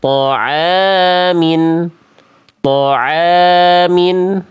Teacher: ainnya berharokat baris atas ketemu alif, maka dia dibaca a-nya sebanyak 2 ketukan, 2 harokat. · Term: matobi'i